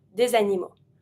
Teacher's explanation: Animaux, starting with the A, I'm going to take my S from D to link it.